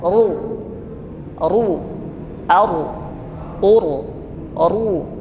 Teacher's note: setiap yang tebal itu pangkal lidah naik ke atas jadi bagian lidah kita yang paling dekat dengan tenggorokan itu diangkat ke atas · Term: ro tebal